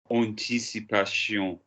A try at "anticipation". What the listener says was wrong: Give me the last bit properly. I've told you off of that before.